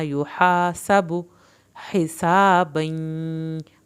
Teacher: ہا کو ہم نے حلق سے پڑھنا ہے. یہاں پر با کی پیش کو لمبا نہیں کرنا.